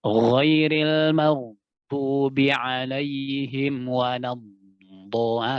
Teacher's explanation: Jadi huruf dhad ini punya sifat rakhwa dan istitalah ya. Jadi gampangnya kita tempelkan mulai dari pangkalisan kita terus sampai dia di makhrajnya huruf lam.